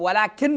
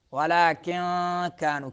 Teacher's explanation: نون کو آپ نے ننگا کر کے پڑھنا نہیں ہے، اس کو چھپانا ہے ناک میں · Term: اخفاء